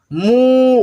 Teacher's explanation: बड़े ऊ की मात्रा है, इसको खींच करके पढ़ना होता है, नीचे लगता है ये भी।